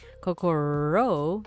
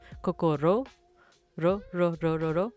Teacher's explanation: your tongue is almost like barely touching like the palate, but like there's still enough space for air to escape, which makes that R sound